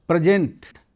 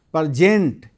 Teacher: प्रेजेंट, जिसके पहले अक्षर पर बलाघात होने पर प्रेजेंट इसका अर्थ उपहार, और दूसरे अक्षर पर बलाघात होने पर प्रजेंट इसका अर्थ प्रस्तुत करना होता है